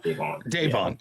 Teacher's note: the emphasis is on the second syllable